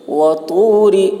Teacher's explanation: طا کی آواز موٹی ہوگی